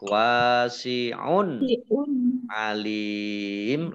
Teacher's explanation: dhammah tanwin bertemu dengan huruf ain, bacaan izhar dibaca jelas.